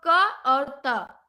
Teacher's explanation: क और त ये अघोष भी है और अल्प प्राण भी है